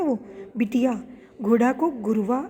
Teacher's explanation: मूल स्वर ए और ओ इसमें क्रमशः ई और ऊ हो जाते हैं। जैसे बेटी को क्या बोला, ई बन गया ना, वो बिटिया, घोड़ा को गुरवा आदि।